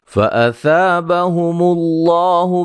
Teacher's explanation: لفظ اللہ کے لام کو موٹا ادا کریں گے، اس سے پہلے حرف پر پیش ہے